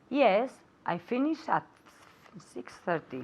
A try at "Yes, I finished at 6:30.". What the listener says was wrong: Oh, I didn't hear the T in the end. One more time.